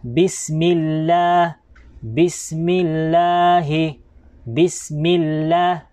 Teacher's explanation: Kaya lang, tulad nga po ng sinabi natin dito, ang vowel po na sinusundan ng Allah ay mim. Ang vowel po ng mim dito, ito po ay kasra, na kung kaya ay manipis din po ang pagbabasa natin ng Allah